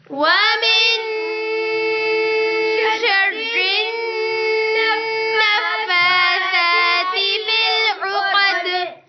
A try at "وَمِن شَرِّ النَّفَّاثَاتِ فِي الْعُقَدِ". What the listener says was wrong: را میں زبان اوپر لگانی ہے، سیٹی کی آواز بند کرنی ہے. وَمِن شَرِّ النَّفَّاثَاتِ فِي الْعُقَدِ.